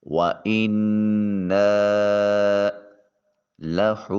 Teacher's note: ہا کے اوپر واو المدیہ الصغیرہ جسے الٹا پیش بھی کہتے ہیں، اس کو ایک الف کے مقام لمبا کریں گے